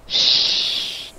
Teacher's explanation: It should sound like shh. It's continuous. You can pronounce the sound as long as you have breath in your lungs. Okay, not breath, but air in your lung.